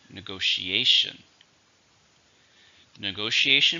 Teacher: it has five syllables stress on the fourth syllable